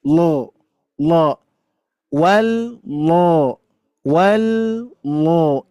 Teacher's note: Karena di sini termasuk lafdzul zalalah tafkhim ataupun tebal, maka kita tebalkan lafaz Allah ini lo. Hati-hati, bukan lo-nya itu bukan di bibir ya, tapi mengangkat pangkal lidah